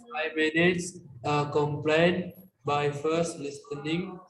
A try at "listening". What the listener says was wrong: Listening. Jadi huruf T-nya nggak dibaca. Dibaca listening.